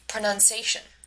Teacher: She also pronounces pronunciation incorrectly by leaving out the medial E vowel in the fourth syllable of pronunciation